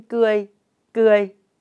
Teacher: Tiếng cười có âm đầu cờ, vần ươi và thanh huyền. Vần ươi được đánh vần và đọc trơn như sau: ưa y ươi, ươi.